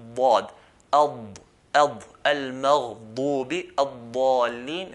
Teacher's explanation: The makhraj point for dad is the side of the tongue, one of the sides of the tongue, either left side, right side, or the left side of the tongue.